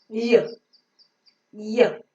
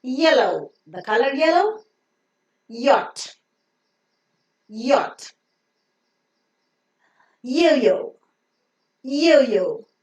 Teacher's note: As you find in Hindi, Y, Y. The front and the tip of the tongue go very, very close to the palate region. They don't touch. The air can pass through it freely. Yes, you can pronounce it for any length of time like a vowel sound.